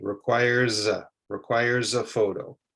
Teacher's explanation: You can hear how the S connects with the A